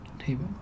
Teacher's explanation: in the word table, the accent falls on the first syllable